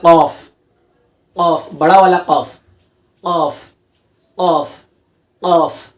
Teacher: उस ज़बान की जड़ को ऊपर की तरफ लगाना होता है, उसके जो ज़बान की जड़ है उसके ऊपर जो तालू है, तालू में वहाँ चिटकाना होता है